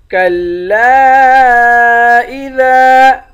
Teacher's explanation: کَلَّا کو تین الف کی مقدار کھینچ کر پڑھیں گے